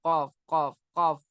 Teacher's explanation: जबान की जड़ और उसके मुकाबिल ऊपर का तालु। जबान की जो जड़ है ना, आखिरी हिस्सा है ना, और उसके मुकाबिल ऊपर का जो तालु होता है।